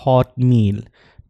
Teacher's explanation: तो इसको आप जब कनेक्टेड स्पीच में पढ़ेंगे तो हॉट मील, ट साउंड जो है वो नेजल रिलीज हो रहा है